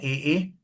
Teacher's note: ए ए कंठ तालव्य होते हैं।